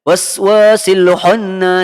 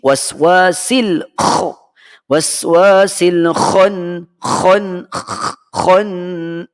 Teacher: Ini huruf kha. Huruf kha bunyinya secara ringkasnya dia ada bunyi keruh dalam kita punya tekak kita. Ada bunyi keladak sikit kita panggil.